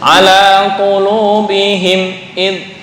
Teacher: qulubihim itu jangan ada dengung walaupun sedikit, langsung ala qulubihim id, walaupun sedikit ala qulubihim id, itu ada dengung tuh, kurang pas. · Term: idhar syafawi